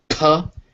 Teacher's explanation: And you can feel how all of them, if you hold it, you go p. You can't make any noise before you release the p. You completely stop all the air.